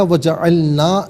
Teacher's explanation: نا کو ذرا ایک الف کی مقدار کھینچ کر پڑھتے ہیں